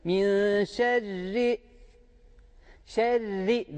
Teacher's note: Buradaki ra harfi ince okunacak, kalın okunmayacak. Min şerri, şerri derken de şeddeyi belli etmemiz gerekiyor.